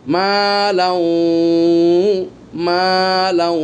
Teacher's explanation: তানমিনকে ওয়াওয়ের ভিতরে প্রবেশ করিয়ে দিচ্ছি এবং গুন্না করতেছি, গুন্নার পরিমাণ একালিফ পরিমাণ, কেননা এটা হলো ইদগাম তাম, পরিপূর্ণ ইদগাম।